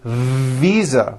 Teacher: I should have said visa with a voiced V